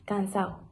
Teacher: la relajación y la pérdida de la D intervocálica, cansado. Eso también es conocido en las zonas meridionales como en Andalucía.